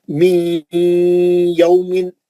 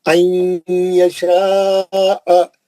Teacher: नून को लेके या में चले गए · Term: इदगाम माल गुन्ना